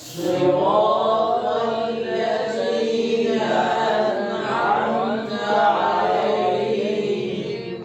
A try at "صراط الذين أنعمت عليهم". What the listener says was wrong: نون کو ہلانا نہیں، انعمت، جیسے پہلے بتایا کہ کسی بھی ساکن حرف کو ہلا کے نہیں پڑھنا سوائے حروف قلقلہ کے. صراط الذين أنعمت عليهم.